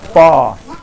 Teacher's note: ओष्ठ मतलब होठ, होठ से बोला हमने, होठ को सटा के बोला।